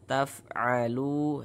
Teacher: Kemudian lu dibaca panjang.